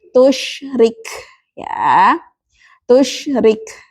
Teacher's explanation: Tusyrik syin ya. Salah satu sifatnya adalah tafasyi. Yaitu bergumulnya atau berhamburnya nafas di mulut. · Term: tafashi